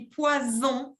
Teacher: Ça s'écrit avec 2 S, parce que si j'écris poison avec un S, c'est prononcé comme una Z